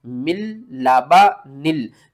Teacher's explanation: نون ساکن کے بعد آگے دیکھیں لام ہے، تو یہاں پر ہم کیا کریں گے، غنہ نہیں کریں گے، ادغام تو کریں گے لیکن غنے کے بغیر کریں گے